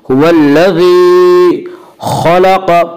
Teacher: खा और क़ाफ दोनों को पुर पढ़ेंगे क्योंकि दोनों खा और क़ाफ हुरूफ़ मुस्तालिया में से हैं।